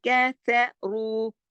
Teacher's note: अम्मल्लज़ीन कफ़रू, रा को मोटा पढ़ेंगे पेश की वजह से, कफ़रू, ठीक है। और रू 2 हरकत खींचेगा भी, वाव मद्दा लगा हुआ है